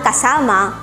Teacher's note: ang salitang kasama o Companion ay salitang malumay na ang diin ay nasa penultima pantig · na ang diin ay nasa penultima pantig na ang ibig sabihin ang patinig na a sa pantig na sa ay higit na mahaba ang nagiging bigkas kaysa dalawang patinig na a sa mga pantig na ka at ma